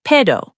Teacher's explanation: Pero, but. The R sounds like a soft flap. Pedo, almost.